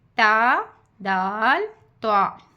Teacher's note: ज़बान की नोक जब ऊपर यानी सामने वाले 2 दांतों की जड़ से लगे इससे ता दाल तो अदा होते हैं